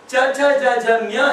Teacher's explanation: ನಾಲ್ಗೆ ಹೋಗಿ ಪ್ಯಾಲೆಟಿಗೆ ತಾಕುತ್ತೆ